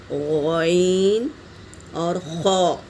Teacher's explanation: حلق کے ابتدائی حصے یعنی منہ کے جانب والے حصے سے ادا ہوتے ہیں۔